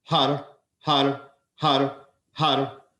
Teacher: the r is trilled rolled like a spanish r